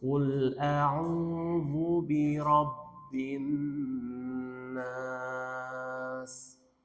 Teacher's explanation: Aslinya mad tabi'i, tapi karena dia di akhir ayat berhenti jadi berubah. Mad arid lis sukun.